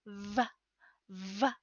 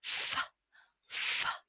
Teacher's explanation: v is the voiced version of the voiceless f sound, produced by resting your teeth on your lower lip